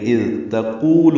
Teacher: اذ تقول میں تا باریک ہے، قاف پر ہے، قو واو مد ہے، دو حرکات لمبا کریں گے